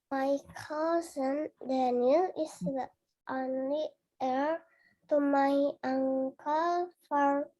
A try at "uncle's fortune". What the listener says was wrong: S-nya kedengeran. Uncle's fortune. Fortune. Jadi huruf T-nya bunyinya CH.